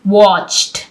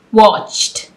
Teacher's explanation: आपने देखा इसमें जो इडी साउंड है वो ऐसे है जैसे हम टी को प्रोनाउंस कर रहे हैं। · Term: ट की तरह साउंड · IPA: /t/